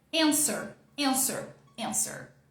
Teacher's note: a força da palavra tá aqui, né? Tá no começo. And é que é a parte mais forte. Aqui, fraquinho.